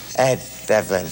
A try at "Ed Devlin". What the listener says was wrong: No, you're strangling it here. Ed Devlin! Hear the difference?